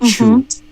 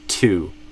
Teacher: basically you did it kind of like a CH sound or a TCH from Portuguese. So it sounded like chu instead of two.